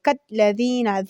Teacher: ذال د زبې له څوکې نه